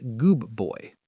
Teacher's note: The D sound in good shifts to a B sound because of the B in boy. It's just easier to say. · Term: assimilation